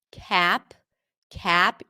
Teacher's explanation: And how to sound more American in a sound? Well, the a sound in American English is a little more closed.